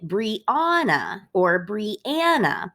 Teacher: Either one of those puts an emphasis on the middle syllable. We don't say Brianna or Brianna.